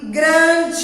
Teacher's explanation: Grande, que termina com E, tem som de I.